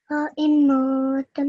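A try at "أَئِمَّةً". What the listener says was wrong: Oh, you made your meme a little long there. Remember, your ma has to be 1 second. A'immatan.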